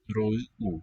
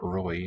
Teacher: Ro-u, not roi, not a diphthong.